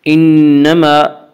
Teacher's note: انما میم مشدد غنہ ہوگا، غنہ کی مقدار ایک الف ہے